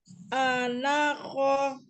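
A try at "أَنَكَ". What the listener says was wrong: A-nya tidak terpisah. Anako.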